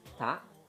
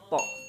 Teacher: Hamas itu keluar udara sedikit, jahr itu tertahan